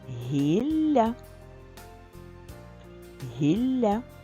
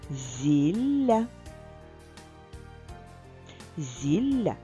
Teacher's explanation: запам'ятай звук ль подовжений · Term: подовжений ль